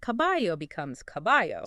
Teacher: It's the tendency to pronounce the L like a Y sound. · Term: yismo